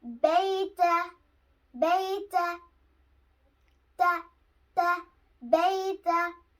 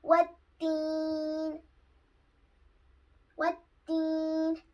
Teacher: Both pictures are showing that the tip of the tongue is touching the root of the upper front teeth